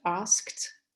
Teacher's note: And so when this ed ending, so when it's there is a preceding voiceless consonant, then it comes to be pronounced as voiceless t